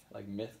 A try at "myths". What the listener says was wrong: You say mist. Myths. No, myth. You say myth. You say myth.